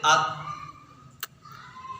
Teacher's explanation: زبان کی نوک اور اوپر کے دانتوں کی جڑ سے ادا ہوتا ہے